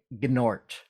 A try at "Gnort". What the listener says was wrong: Yes, the G is silent. Now, you're not from Nort's planet, so you don't know that. You have to be from his planet to understand that the G is silent.